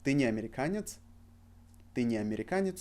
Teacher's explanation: So we emphasize on не. And we got a question.